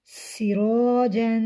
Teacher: جیم کے اوپر دو زبر ہیں، دو زبر کو تنوین کہتے ہیں اور تنوین کو غنے کے ساتھ پڑھتے ہیں۔ غنہ ناک میں آواز چھپانے کا نام ہے۔ وقف کی صورت میں یہاں دو زبر کے جو ایک زبر ہے وہ ختم ہو جائے گا، تو الف سے پہلے زبر الف مدہ، تو یہاں ہم وقف کی صورت میں ایک الف کے برابر کھینچ کر پڑھیں گے۔